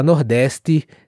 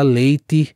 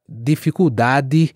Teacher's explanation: Eu já tive particularmente vários alunos que têm dificuldade com essa palavra, por exemplo, dificuldade, com a maneira como o pessoal do sul e sudeste do país falam o D, com som de quase um G. E no Nordeste se fala o D com som de D mesmo, e o T também com som de T mesmo